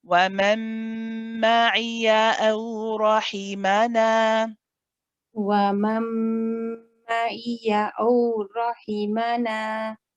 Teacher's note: So you say aw, and then we say rahimana. The ra here is heavy because it has a fatha, and then the rest of the letters are nice and light. The noon here is has the alif mud after it, and this is again mud tabi'i, so it's held for 2 counts.